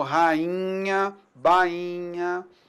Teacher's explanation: O nh também é um sinal de nasalização